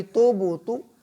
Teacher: با کے اوپر قلقلہ ہوگا، با حروف قلقلہ میں سے ہے، دوبارہ سے آواز آئے گی